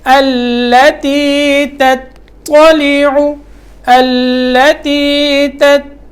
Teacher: تا پڑھنا ہے، تا باریک، اس کے بعد طا موٹا.